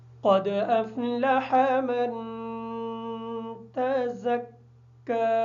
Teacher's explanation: تزکا کی جو زا ہے اس زا کو سختی کے ساتھ ادا کریں گے اس وجہ سے کہ یہ زا حروف سیٹی میں سے ہے